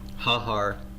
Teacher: harmonization what he's saying is that this vowel is harmonized the the vowel of the noun is harmonizing with the vowel of the article